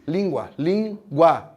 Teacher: Então, ó, última, penúltima, antepenúltima, isso é uma proparoxítona. Aqui, língua, língua, última, penúltima, isso é uma paroxítona.